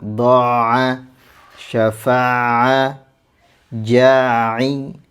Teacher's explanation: mad yang dibaca itu tidak sempurna kemudian langsung pindah ke huruf ain